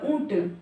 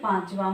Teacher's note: अनुस्वार यानी जो हम सिर्फ मुंह से बोलते हैं एंड अनुनासिक यानी नाक और मुंह दोनों का हम प्रयोग करते हैं